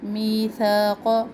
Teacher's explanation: میثاق، می یا مدہ، ثا الف مدہ ہے اور ثا کو انتہائی نرمی سے پڑھے